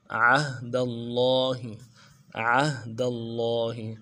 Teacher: حمزہ کو ہا کے ساتھ ملانا ہے اور ہا کو نرمی سے ادا کرنا ہے، آواز جاری رہے گی ہا میں